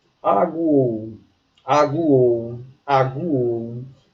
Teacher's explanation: É uma sequência que tem semivogal, mais vogal, mais semivogal. Tudo na mesma sílaba. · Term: tritongo